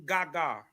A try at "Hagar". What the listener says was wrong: No, that G is silent. That G will be silent. Yeah, that G would be Hagar. Yeah, it would be Hagar, right?